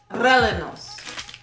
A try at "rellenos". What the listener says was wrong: The double L is a Y.